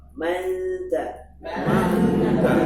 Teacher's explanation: Karena nun dengan ta itu makhrajnya berdekatan, makanya disebut akrab. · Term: ikhfa akrab